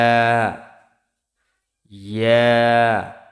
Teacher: জিহ্বার মধ্যখান তার বরাবর উপরের তালুর সঙ্গে লাগিয়ে উচ্চারিত হয় ইয়া